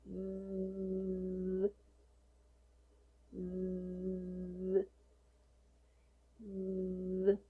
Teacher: The stream of air should flow between your upper teeth and the tongue. Note that the Z is a voice consonant sound, so you need to add your voice when pronouncing it.